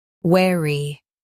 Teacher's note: In UK, stress we and soften ry. · In U.S., stress where and keepy light. In UK, stress we and soften re.